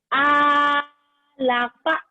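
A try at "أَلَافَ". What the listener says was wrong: Lanya panjang. Alalafa. Ala-ala-fa. Ala-fa. Jadi ala-ala.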